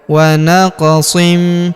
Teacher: Huruf qof berharakat sukun kita pantulkan atau kita qalqalahkan.